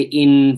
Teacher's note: That noon is sakin, and the ghunnah is therefore more clear inside in. When we say in, for example, in, the ghunnah is much more clear.